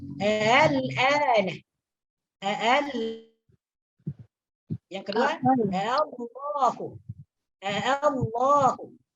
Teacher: Tak boleh dibaca dengan tahqiq. Jadi caranya adalah hamzah yang kedua ini dibaca antara hamzah dengan alif. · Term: tasghir